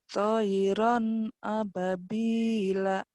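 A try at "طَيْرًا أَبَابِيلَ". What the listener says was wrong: Toiran ababila. Hati-hati panjang pendeknya nih. Pandang pendeknya masih ketuker-tuker, hati-hati.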